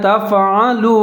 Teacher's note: دونوں کو ملا کے پڑھیں گے، عین کے اوپر زبر ہے، یہاں پر پھر عین کا آپ نے خیال رکھنا ہے، عین کو موٹا پڑھنا ہے ، تفعلوا، لام کے اوپر پیش ہے، واو ساکن ہے، دونوں